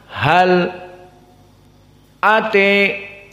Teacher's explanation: Maka di sini prakteknya hal bertemu dengan ata, lam sakinah bertemu dengan hamzah, maka di sini as-saqt diberhentikan sejenak